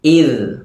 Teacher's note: ദാലിൻ്റെ മഖ്റജ് നാവിൻ്റെ അറ്റവും മേലെ മുൻപല്ലിൻ്റെ അറ്റവും